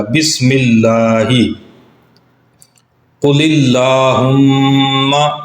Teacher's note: قل کا جو آخری لام ہے اس کے نیچے زیر ہے، جس کی وجہ سے لفظ اللہ کے لام کو ہم باریک پڑھیں گے